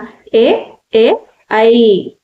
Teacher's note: గొంతు దవడ రెండింటి సహాయంతో పలికేవే కంఠతాలవ్యాలు